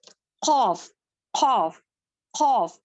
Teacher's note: पर हमारी जुबान की जड़ टच होती है खौफ खौफ खौफ इसको कैफ की तरह नहीं पढ़ेंगे बारिक नहीं पढ़ेंगे इसको मोटा ही पढ़ेंगे